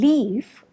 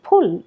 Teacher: the L in leaf is known as a clear L, whereas the one in pull is called the dark L